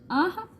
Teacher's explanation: विसर्ग आह कंठ से उच्चारित होते हैं।